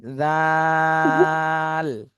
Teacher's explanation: জিহ্বার আগা, সামনের উপরে 2 দাঁতের আগার সাথে লাগায় উচ্চারণ করতে হবে। এটা 3 আলিফ টান দিতে হবে।